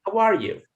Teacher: in this sentence, the stress is on how and you